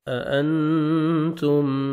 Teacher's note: نون ساکن کے بعد حروف اخفاء میں سے تا ہیں، آپ نے نوز میں ساؤنڈ لے کے جانا ہے